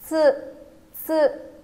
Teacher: mình cũng khép hai răng lại và đặt lưỡi ở trên, ở đằng sau răng trên và phát âm bật hơi ra